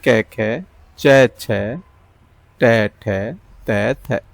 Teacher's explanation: कंपन नहीं हो रही है इनको बोलने में, तो ये हो गए आपके अघोष व्यंजन